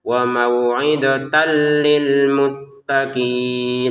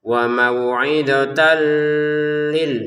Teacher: Jadi yang awalnya tertulisnya wuidotan tanan gitu ya. Ada lam di depannya masukin tanwinnya ke lam sehingga cara bacanya wauidotal dan masukin tanpa dengungan.